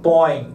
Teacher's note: eu vejo que a vibração das fossas nasais tá então eu tenho aqui um ditongo nasal